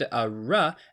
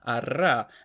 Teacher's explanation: a retroflex glide /ɻ/ and an alveolar flap or trill /ɾ~r/